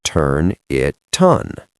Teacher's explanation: And then it ends with a T. On begins with an O, so the T moves over. The whole phrase becomes turn it ton.